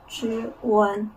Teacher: Initial consonant is the retroflex sound ch, and final is a front nasal sound one.